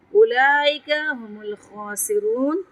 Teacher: خا پہ تفخیم کریں گے اور الف مدہ کے برابر اس کو پڑھیں گے کیونکہ اس کے اوپر کھڑا زبر ہے، اور را پہ تفخیم کریں گے اور واو مدہ ہے تو اس کو لمبا کر کے پڑھیں گے.